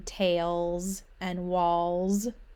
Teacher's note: the s sound which sounds like a z in tails and walls when we say it